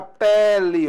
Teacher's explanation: a palavra pele, olha esse E aqui, ó, aberto, está vendo só? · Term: E aberto